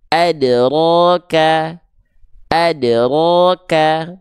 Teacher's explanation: kesalahan yang berikutnya pada huruf dal sukun ya adalah jangan sampai pantulannya tertahan